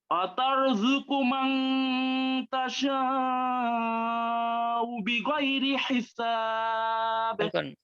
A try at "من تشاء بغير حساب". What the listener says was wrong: তাশাউ বললে হামজার উচ্চারণ হচ্ছে না, আর শিনটাকে মুখ পাশ রেখে বলতে হবে। পাশ রেখে বলবেন, খেয়াল করেন। وترزق وترزق من تشاء মুখ পাশ, এরকম না, তাশাউ বিগাইরি হিসাব।